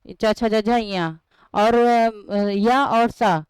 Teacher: च वर्ग च, छ, ज ञ और य और स इन इस सब का उच्चारण स्थान तालु होता है